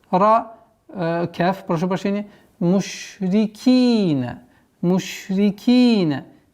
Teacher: В размере двух огласовок тянем кесру.